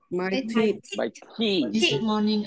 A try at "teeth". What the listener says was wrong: Đừng có teeth, nó là teeth, kéo dài ra teeth.